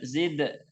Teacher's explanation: qalqalahnya langsung dipantulkan.